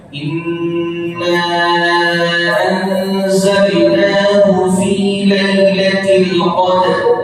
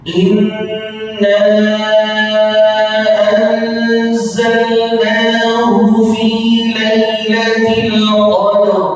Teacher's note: Nah, jadi ra'nya itu tetap kita harus baca. Ya, dalnya kita baca dan dia punya sifat qalqalah di situ. Lalu ra'nya juga tetap kita baca.